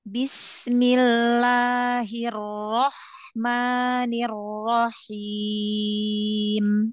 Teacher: huruf mim yang fathah Ma jangan terlalu panjang